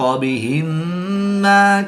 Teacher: میم ساکن کے بعد دوسری میم ہے تو یہاں پر ادغام شفوی ہوگا، یعنی غنہ کر کے پڑھیں گے